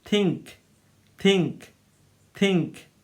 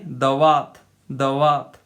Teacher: the tongue touches the upper teeth in Hindi, but in this case in English, the tip of the tongue touches both upper and lower teeth